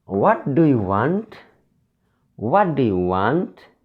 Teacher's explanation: Whenever the voice in speaking falls, it is falling intonation. In case of a WH question, falling intonation happens.